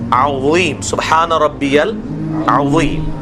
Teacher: زبان کی نوک کو دانتوں کی نوک کے ساتھ ٹچ کرنا اگلے دانتوں کے نچلے حصے کے ساتھ